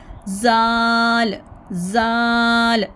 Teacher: ज़ुबान की नोक को, टिप ऑफ द टंग को ऊपर वाले जो सामने के जो दांत है ना वहाँ से लगाएंगे, ऊपर फ्रंट इनके किनारे पर रखेंगे। तो हमने ज़ुबान को हल्का सा थोड़ा सा बाहर निकालना है और आवाज़ में ज़ोर नहीं देना।